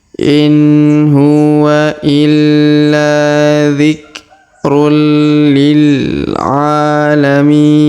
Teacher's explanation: huruf mi kita panjangkan 2, 4 atau 6 harokat karena di depannya terdapat ya sukun sebelum huruf pemberhentian, dan huruf pemberhentian huruf na kita sukunkan atau kita matikan.